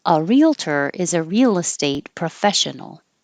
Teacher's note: the real estate, the L connects over.